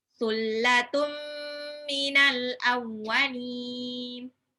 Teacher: Sullatum, tanwin ketemu mim, idgham bigunah tahan. Sullatum minal, alif lam qamariyah, al awwalin.